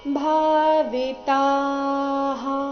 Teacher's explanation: ಭಾ ಇಲ್ಲಿ ಮಹಾಪ್ರಾಣ ದೀರ್ಘ ಬರಬೇಕು